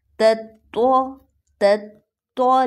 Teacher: یہاں پر ایک جیسی اواز والے ٹو لیٹرز ہیں تا ط پہلا باریک اور دوسرا موٹا